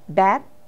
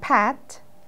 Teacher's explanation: It is VOT, or voice onset time, is how long it takes for your vocal cords to start vibrating after releasing a sound. If you see bat and pat, you'll notice that your vocal cords vibrate earlier for b than for p.